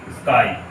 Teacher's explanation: यदि हम क से लेकर के म तक, क से लेकर के म तक कहीं भी पहले स का प्रयोग करेंगे तो हमारे मुंह से जो उच्चारण होता है उसमें ई आता है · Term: ई का भ्रम